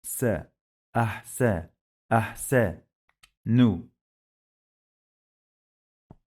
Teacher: We have sukun here, so we must pause on ha.